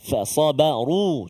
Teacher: Dan ra yang baris dhammah kena tebal.